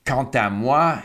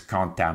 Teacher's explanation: very often the consonant of the previous word almost seems like the initial consonant in the next word. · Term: liaison